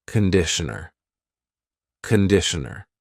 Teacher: The first vowel is a schwah. · It's not conditioner, it's conditioner. The first vowel is a schwa.